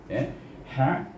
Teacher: Ha pedas yang berada di tengah-tengah halqum kita. Ha, jadi bunyinya rah.